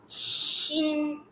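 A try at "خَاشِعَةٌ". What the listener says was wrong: Okay, jangan shin Shi je. Shi.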